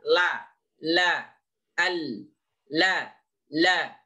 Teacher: lidah kita yang depan ini menempel pada langit-langit yang depan lalu posisi langit-langit yang berada di belakang gigi seri yang atas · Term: lam